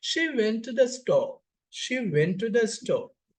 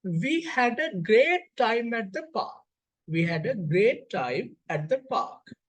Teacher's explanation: When we clearly observe the pronunciation, when we clearly hear the pronunciation, we can identify there's a falling of speech, falling of pitch at the end of the sentence. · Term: falling terminal juncture